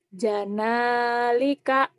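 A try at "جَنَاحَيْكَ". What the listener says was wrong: kok jadi Janalika? Ada lam dari mana? Janahika.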